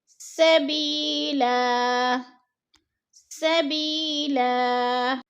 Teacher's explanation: اگلا لفظ ہے سبیلا، ادھر یا ساکن سے پہلے با کے نیچے زیر ہے تو یا مدہ ہو رہا ہے، یا مدہ کو ہم نے ایک الف دو حرکات کے برابر کھینچ کر پڑھنا ہے